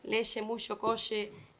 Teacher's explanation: un rasgo como la fricatización de che